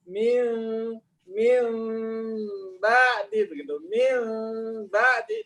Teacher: nggak boleh tertutup rapat, tapi harus ada celah, karena nun mati dan ba adalah blenderan antara nun dan ba